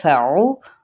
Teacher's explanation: عین کے مخرج کو وسط حلق سے ادا کرنا ہے، لیکن او لمبا نہیں کرنا، نہ ہی مجہول پڑھنا ہے، او کہہ دینا ہے، ٹھیک ہے؟